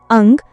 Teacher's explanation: अनुस्वार अंग का उच्चारण स्थान नासिका नाक है। यह एक अयोगवाह है जिसका उच्चारण करते समय हवा केवल नाक से बाहर निकलती है।